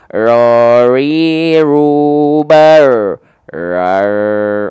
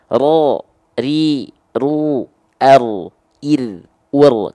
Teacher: Ro-nya tetap bergetar sedikit, ya, bergetar tapi sedikit, tapi tetap tegas, lugas dan jelas. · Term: huruf ro